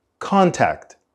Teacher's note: we also don't complete the full T sound at the end of the word contact